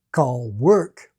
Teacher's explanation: in some Caribbean varieties, like in rhotic Guyana, you can hear clear L and clear R,